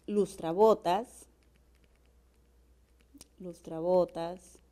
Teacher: cuando yo silabeo lustrabotas, la sílaba tónica se encuentra en bo, por lo tanto requiere, no requiere de acento ortográfico porque termina en una S, es como una grave.